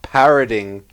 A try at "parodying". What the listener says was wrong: Parody. It's not parroting. It's parody. There's no T in there.